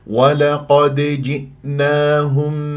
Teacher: شوف الدال مقلقله قلقله صغرى في وسط الكلام شلون وسط الكلام ما راح اقف عليها مرتبطه بكلمه جئناه ف